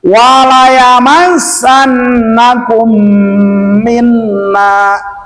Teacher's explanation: kum di sini dipanjangkan dikarenakan mim mati ke depan ada huruf mim. Namanya adalah idgham mislain sogir ataupun idgham mimi, boleh.